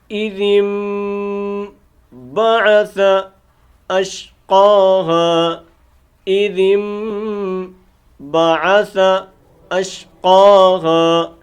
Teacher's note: یہ جو میم ہے یہ اقلاب کی نشانی ہے۔ نون ساکن کے بعد اگر با آ جائے، اب یہاں دیکھیں یہ نون ساکن ہے اور اس کے بعد آ جائے با، تو اس نون کو میم کے ساتھ ہم بدل کر پڑھتے ہیں اور غنہ کر کے ادا کرتے ہیں